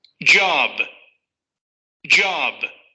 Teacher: Parece como si al principio tuviera un silencio y luego la consonante explotara. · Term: momento de explosión